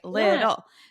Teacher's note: has the two T's in the middle but makes a almost like a du sound